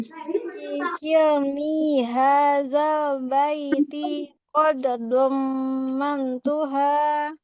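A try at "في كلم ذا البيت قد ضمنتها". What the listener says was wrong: Ya, kilminya tidak panjang. Fi kilmi hadzal baiti qad dhammantuha.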